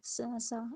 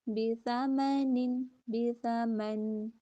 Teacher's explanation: سا کے اندر سیٹی نہیں ہوتی